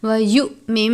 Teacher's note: وَيُؤْمِن بِاللَّهِ، وَيُؤْمِن میں حمزہ اور جزم ایک ساتھ ہیں، حمزہ ساکنہ ہے، حمزہ ساکنہ کی صورت میں لفظ کو جھٹکا دے کر پڑھیں گے